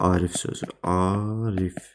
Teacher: Arif sözündə uzanma birinci hecaya düşür